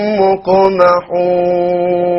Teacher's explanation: a silent qaf will be qalqala